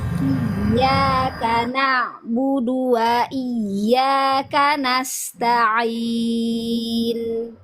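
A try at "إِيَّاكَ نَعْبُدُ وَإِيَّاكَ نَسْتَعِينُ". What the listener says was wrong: Na'budu. Tipiskan ya, budu, dal sama ba tipis dia ya. Jangan terlalu dorong. Jadi jangan terlalu dorong lidahnya atau ke makhrajnya itu jangan terlalu ditekan. Nah, ini khusus buat orang yang medok ya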